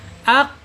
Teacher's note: kalau dia sukun pangkatnya atau harokatnya, dia akan mantul ya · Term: qalqalah